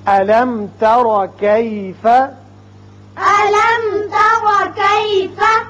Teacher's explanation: علم میم ساکن ہے اور بعد میں تا ہے، یہاں اظہار ہوگا میم کا۔